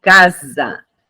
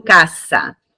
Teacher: se está junto com uma vogal no meio dentro de uma sílaba, eu vou pronunciar Z